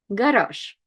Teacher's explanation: Z is last, so it's kind of like sh rather than zh